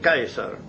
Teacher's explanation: el diptongo se pronunciaba con a e